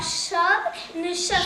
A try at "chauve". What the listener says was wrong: Chauve, chauve, pas chave. Chauve.